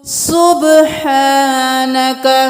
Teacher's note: سبحانك سین کو سیٹی کی آواز سے نکالیں گے، با قلقلہ کریں گے، آواز پلٹ کے واپس آنی چاہیے ۔ سبحانک نہیں کرنا، سبحانک ح گلے کے درمیان سے ح